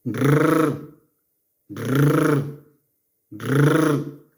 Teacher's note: to pronounce the strong R, you must expel a little air so that the tongue vibrates repeatedly